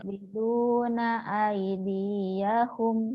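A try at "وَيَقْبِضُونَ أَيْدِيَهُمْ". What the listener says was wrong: Pendek, gak ada yang panjang.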